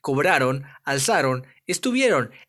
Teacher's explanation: Hay algunas palabras que no se acentúan aunque terminen en on, porque tienen la sílaba tónica no al último de la palabra, sino en la penúltima sílaba